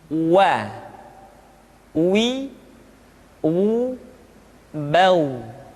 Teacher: Selanjutnya huruf wa diucapkan dengan cara memonyongkan dua bibir kita.